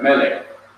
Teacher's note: The accent is on the first syllable.